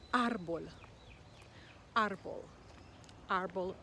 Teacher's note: the accent is on the a and so we emphasize that syllable